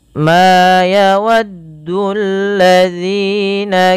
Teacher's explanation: panjangkan huruf ma sepanjang dua harakat karena ia memiliki huruf alif